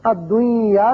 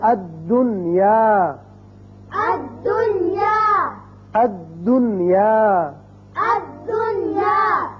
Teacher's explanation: یہاں یاد رکھیے کہ نون کا اظہار ہوگا، اسی قاعدے کا نام اظہار مطلق ہے۔ جب اس کو پڑھیں گے الدنیا نہیں کریں گے بلکہ پڑھیں گے الدنیا، الدنیا، الدنیا، الدنیا، نون کا اظہار ہوگا۔